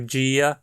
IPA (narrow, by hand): d͡ʒia